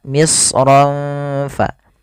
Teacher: Pada lafal misran fa inna lakum, pada lafal ra ketemu fa ada bacaan ikhfa. Ikhfa menyamarkan suara ro-nya kepada huruf fa